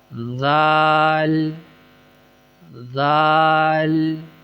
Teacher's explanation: زبان کے سرے کو جب اندرونی طرف اوپر کے دانتوں کے ساتھ ملایا جائے گا تو ادا ہوگا